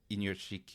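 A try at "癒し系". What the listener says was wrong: Yeah, there's no NU. It's just Iyashike.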